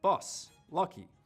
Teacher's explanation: the sound in strut, bus, lucky, has to move back further. Bus, lucky.